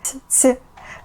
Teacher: it sounds like something in between t and s, but soft. Ц, like a tea kettle whistling.